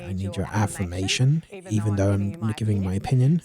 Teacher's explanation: >> So, one of the key characteristics of an Australian accent, which is much more maligned, is the rising inflection. So, >> Australians will often, but not always, speak with a tune that goes up at the end of the sentence, even though it's not a question